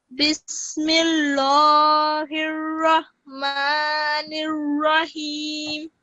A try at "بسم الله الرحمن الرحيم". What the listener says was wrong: Sorry, I'm just gonna say, this one, don't pronounce this in a thick kind of way. Don't say Bismillah. Just say it in a thin way, Bismillahir Rahman. The reason is, I can just quickly explain this rule.